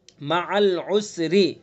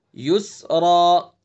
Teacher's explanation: مع العسر، را کو باریک پڑھیں گے چونکہ را کے نیچے زیر ہے. یسرا، اس را کو پر پڑھیں گے چونکہ را کے اوپر زبر ہے.